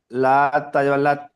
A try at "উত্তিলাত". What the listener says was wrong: লা নয়, লাম। লাম তাজ আবার লাত, লা নয়, লাম। লাম বলে টান দিয়ে পড়বেন। বানান করার সময় তো বানান করা, যখন বানান করবেন প্রতিটা অক্ষর টান দিয়ে পড়বেন। আইন ত পেশ উত, আইন ত পেশ উত, এইভাবে প্রথমে বানান করার সময় কেমন পড়বেন? আইন ত পেশ উত,